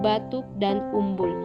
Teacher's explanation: huruf u kapital yang bercirikan agak tinggi belakang dan bulat